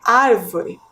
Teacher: a sílaba mais forte é a antepenúltima